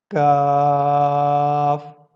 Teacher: کاف، لیکن یہ باریک پڑھا جائے گا